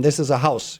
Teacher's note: Versus in this is a house, you have the same, it's the opposite melody. You go from a high pitch to a low pitch.